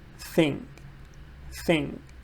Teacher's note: when I'm saying thing or thank you or that's it um my tongue is sticking out a little bit my tongue is coming out